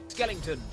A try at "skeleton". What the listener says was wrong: Where's the ing? There's no ing in skeleton. Skeleton. Say skelet. Un.